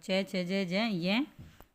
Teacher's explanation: तालव्य मतलब ताल के कठोर भाग से जो बोला जाता है